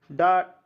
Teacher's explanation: डा टा वाला वर्ग जो होता है उसको मूर्धन्य से आते हैं